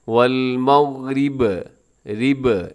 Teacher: آپ کو با کے اوپر پیش نظر آ رہی ہے، لیکن جب وقف کرتے ہیں تو با ساکن ہو جائے گی، جب ساکن ہوگی تو ہم قلقلہ کر دیں گے ، والمغرب، رب ایسے با کو ڈبل کریں گے۔ آگے دیکھیے